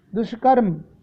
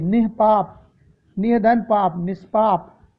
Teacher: मूर्धन्य सा के रूप में विसर्ग परिवर्तित हो गई